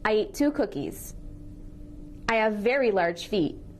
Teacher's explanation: we're linking consonants with similar sounds. When we do that, we only say the sound once and we say it a little longer.